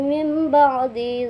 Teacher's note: nun matinya bertemu dengan ba sehingga mimnya dibaca samar tapi tetap didengungkan